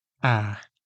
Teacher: This is a front open vowel. It means that your mouth is wide open and your tongue is very low and forward. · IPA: /æ/